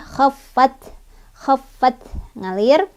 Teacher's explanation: Khaffat, taknya ada sifat hamsnya, jadi ada aliran udara ya.